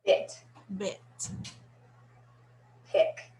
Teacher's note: This is a rather high vowel for American. I. So you'll want to lift your zygomatic arches that are these smile muscles. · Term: Short I